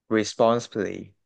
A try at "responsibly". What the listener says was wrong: I could hear that you skipped this part here in the middle. Responsibly. Don't skip the C. Make sure that you enunciate each and every syllable, okay?